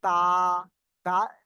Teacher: জিভের আগার কিনারা এবং সামনের উপরে দুই দাঁতের গোড়ার সাথে লাগিয়ে উচ্চারিত হয় তা।